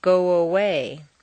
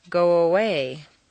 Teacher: your lips are going to be in the forward position, so a W, a W, quite naturally leads into the next sound. Go away. You don't want to say go away and break the undercurrent of your voice. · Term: W glide